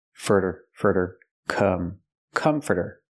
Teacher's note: we hear here the T pronounced like a fast D